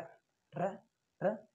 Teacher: र का उच्चारण करते हैं हमारी जीभ है ना वो वाइब्रेट यानी कंपन करती है। र र र इसे बोलते हैं हमारी जीभ कंपन करती है, इसलिए हम इसको प्रकंपित या लुड्डित व्यंजन भी बोलते हैं। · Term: प्रकंपित व्यंजन